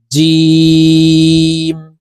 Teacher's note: জিম উচ্চারণ জিহ্বার মধ্যখান থেকে হবে কারণ জিমের মাখরাজ জিহ্বার মধ্যখান থেকে